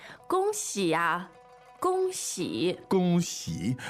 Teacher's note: the tones there are first and third